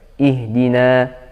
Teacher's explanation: ketika kita berhenti pada ihdina dibaca Dua harokat panjang